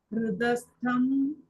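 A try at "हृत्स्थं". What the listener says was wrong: This is Hrit Mataji, not Hrita. It is Hrit. Hrit Stam.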